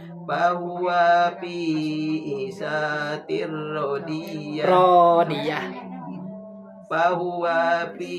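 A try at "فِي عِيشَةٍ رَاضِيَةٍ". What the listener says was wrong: Pi panjang.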